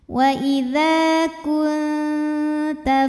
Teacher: Maka bunyi nun sukun ini samar-samar siap-siap menuju huruf ta disertai bunyi dengung ya dan untuk huruf Ta ini karena makhrajnya masih dekat dengan · dengungnya masih sedikit jadi suara yang masuk hidung masih sedikit aliran suara dari mulut masih banyak ya jadi siap-siap menuju huruf ta ya tapi belum menyentuh makhraj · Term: ikhfa aqrab